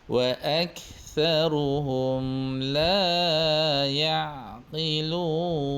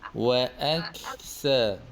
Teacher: ada sedikit angin pada huruf kaf